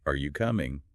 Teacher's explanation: with yes no questions like are you coming, our pitch tends to go up at the end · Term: upward inflection